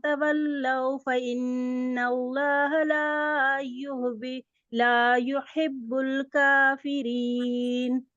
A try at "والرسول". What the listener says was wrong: देखिए व रसूला नहीं है